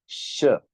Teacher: we are actually letting the air flow through our teeth. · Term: soft sh